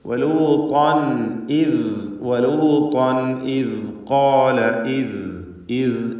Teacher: തൻവീനിനെ വ്യക്തമാക്കി വെളിവാക്കി പറയുക. ഇതാണ് ഇദ്ഹാർ കൊണ്ട് ഉദ്ദേശിക്കുന്നത്. അവിടെ അല്പം പോലും മണിച്ചു പോകരുത്.